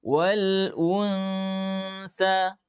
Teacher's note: Ingat makhrajnya sa, ujung lidah bertemu dengan gigi seri depan atas. Maka tempelkan ujung lidah kita dengan ujung gigi seri atas dengan lembut. Wal tapi jangan tekan. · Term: ikhfa